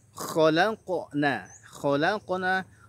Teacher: kha-nya tebal, lamnya tipis, qafnya tebal, nunnya tipis.